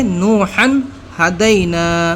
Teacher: اخفا نہیں کیا، غنہ اس کے اندر ہم نے نہیں کیا